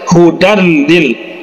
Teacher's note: lam nah ini adalah salah satu huruf dari pada idgham bilagunnah jadi cara membacanya dilangsungkan saja Hudan Lil ya jangan didengungkan